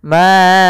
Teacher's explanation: Maka kita namakan dengan mad jaiz munfasil. Maka huruf ma-nya kita panjangkan dulu 4 harokat atau 5 harokat. Ma'auna, tapi jangan terlalu panjang sampai 6 harokat atau 7 harokat dan sebagainya.